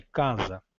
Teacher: o S único intervocálico passa a ter o som de Z